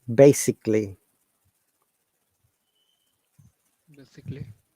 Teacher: if a word has ALLY at the end, Okay, we do not pronounce the A. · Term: schwa sound